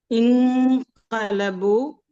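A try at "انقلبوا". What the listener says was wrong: ഇന്ന് വരരുത്, ശ്രദ്ധിക്കണം. ഇന്നില്ല, ഇന്ന് കേൾക്കാൻ പാടില്ല. ഇൻഖലബു.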